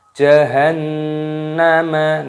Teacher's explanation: nun tasdid, hukumnya dibaca gunnah itu artinya berdengung, jadi didengungkan.